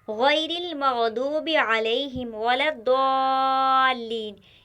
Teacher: गैरी का जो गैन है वो मोटा है, और रा बारीक है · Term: गैन मोटा